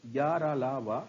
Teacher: सभी अंतस्थ व्यंजन या, रा, ला, वा सभी का घोषत्व सघोष होता है।